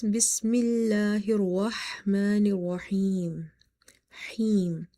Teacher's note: So before the silent letters, if the second last letter is your madda letter, then instead of one alif you will stretch up to 3 alif by applying the rule of madde arid